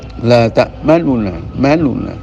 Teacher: nun dummahnya itu dibaca dengan dummah yang tidak 100% · Wajah yang kedua adalah dibiarkan nunnya itu izhar, yakni dua nun, nuna, ya, manuna, la ta'manuna. Akan tapi nun dhammahnya itu dibaca dengan dhammah yang tidak 100% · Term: ismam